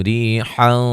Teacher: ری یا مدہ ہے، اور را کو باریک پڑھیں گے